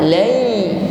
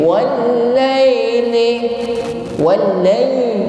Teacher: Ada ya sukun yang sebelumnya ada fathah. Lai. Kita pastikan terucap dengan bunyi i, tidak miring.